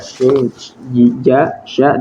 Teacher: Kemudian makhraj yang ketujuh adalah dan dari tengah lidah keluar jim, syin dan ya